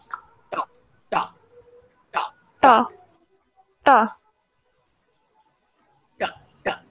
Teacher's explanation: ট বর্গ টাকরি মেরে উচ্চারণ করতে হয়।